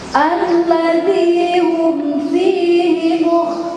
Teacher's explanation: Membaca fa bukan dua bibir, talifun bukan, tapi ujung gigi atas dengan bibir bawah, pada bibir fa pun, ya.